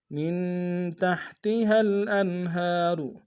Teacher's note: تحتها الانہار، مین میں نون ساکن ہے، غنہ کریں گے، انہار میں ہا کے اوپر کھڑا زبر ایک ہمدان میں کھینچیں گے، را کو موٹا ادا کریں گے